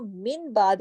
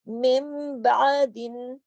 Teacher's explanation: نون ساکن ہے یعنی جزم والا ہے، اس کے بعد با آ گیا، تو ایسی صورت میں نون جو ہے وہ میم میں بدل جائے گا، اور اس کو من بعد نہیں، مم بعدن۔